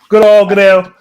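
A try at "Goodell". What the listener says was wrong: You're adding an O to the man's name.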